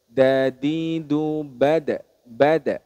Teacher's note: Dal yang tidak ada titiknya itu dia memiliki sifat syiddah atau tertahannya nafas